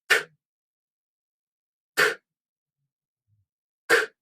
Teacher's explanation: The K consonant is a voiceless consonant, meaning your vocal cords here do not vibrate. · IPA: [k]